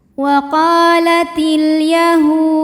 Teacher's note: Karena alif lam menghadapi huruf qamariah yaitu huruf ya, maka lam sukun dibaca jelas atau biasa disebut dengan izhar qamari.